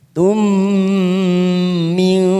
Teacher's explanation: mim sukun bertemu mim idgham mimi, kita tekan selama 3 ketuk